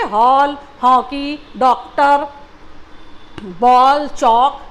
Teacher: इसका उच्चारण बच्चों अ और ओ के बीच की ध्वनि के रूप में किया जाता है। जैसे हम बोलते हैं ना हॉल, तो उसमें आपको ओ और ओ दोनों सुनाई दे रहा है हॉल, बॉल, डॉक्टर। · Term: आगत ध्वनि